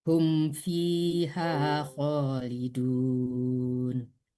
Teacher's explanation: Kalau mim ketemu fa tidak dengung, yang dengung itu nun ketemu fa ya.